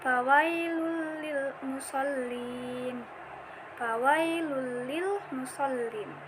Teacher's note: Lam sukun diharokati tanwin bertemu dengan huruf lam setelahnya. Cara membacanya seakan-akan di huruf lam tersebut seperti ada berupa tasdid, langsung dimasukkan. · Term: bila gunnah